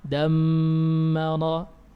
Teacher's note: Huruf mim yang dibaca tasydid dibaca gunna dengan kadar 2 harakat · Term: mim tasydid